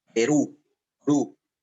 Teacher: tiene la mayor fuerza en la u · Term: aguda